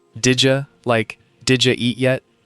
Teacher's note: Did you often becomes didja. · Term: connected speech